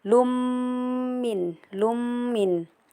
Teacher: Lanjut, di sini juga terdapat hukum gunnah karena terdapat mim bertasjid jadi baca ditekan 3 harkat